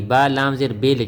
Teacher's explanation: یہ لفظ اللہ کی لام ہے، اس سے پہلے زیر ہوگی تو یہ باریک پڑ جائے گی ، ورنہ یہ ہر حالت میں پر موٹی پڑ جاتی ہے،